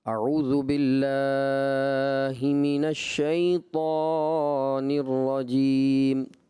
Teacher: تو انہوں نے سب سے پہلے جو غلطی کی تعوذ میں، آپ نے اس طرح پڑھا: اعوذ باللہ من الشیطان الرجیم. تو تعوذ میں اعوذ باللہ جو کھڑا زبر ہے اس کو آپ نے زیادہ دراز کر دیا